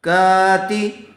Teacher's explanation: زبر والے حرف کے بعد الف آیا ہوا ہے، اس لیے الف مدہ ہوگا، تھوڑا کھینچ کر پڑھیں گے کاف کو. تا زیر تی کاتی، با یا زیر بی کاتبی، نون زبرنا کاتبین، کرامن کاتبین.